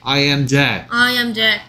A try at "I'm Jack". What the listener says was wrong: 줄여서 지금 방금은 안 줄이고 읽었죠. I am Jack. 줄여서 읽으면 I'm Jack.